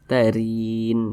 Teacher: huruf ro dibaca tipis, dibaca tarkik karena dia berharokat kasroh atau memiliki tanda baca baris ke bawah, maka dibaca tipis.